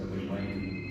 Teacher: he's basically uh saying waiting but he just dropped the G so the G sound in wning is dropped entirely in fast